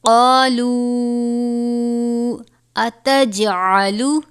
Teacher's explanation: جیم حرف قلقلہ میں سے ہے، اس پر قلقلہ یعنی جنبش ہوگی